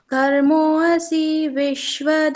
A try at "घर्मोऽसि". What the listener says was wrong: जैसे यहाँ पर घर्मो असी अ उच्चारण सुनाई दिया, तो अ नहीं आना चाहिए, क्योंकि यहाँ पर है ही नहीं।